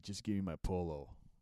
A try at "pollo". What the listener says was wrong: Do you mean pollo? Double L in Spanish. It's pronounced like a Y.